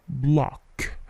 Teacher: Dengan bunyi yang memantul ya di huruf K-nya